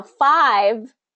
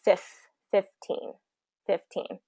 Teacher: five changes from that long vowel to the short vowel